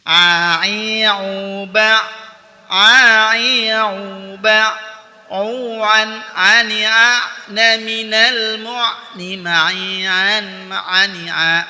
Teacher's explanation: Huruf ain dikeluarkan dari tenggorokan bagian tengah seperti kita mengucapkan huruf ha